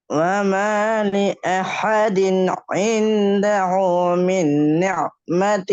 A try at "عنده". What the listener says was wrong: இந்த ஊ இந்த ஊ இல்ல ரெண்டுமே நீங்க ஆயினிக்க உச்சரிக்கிறீங்க. சொல்ல ஐன்ல ஸ்டார்ட் பண்ணி ஐன்லயே முடிக்கிறீங்களே பிழையே அது. ஐன்ல ஸ்டார்ட் பண்ணி ஹேல முடிக்கணும். ஐந்தஹு